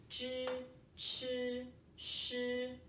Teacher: like your lips, they're all rounded, open. They are at the same shape of the mouth.